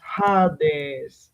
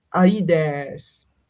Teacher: one of the few words that develops an aspiration, the H sound in the beginning, that is not actually original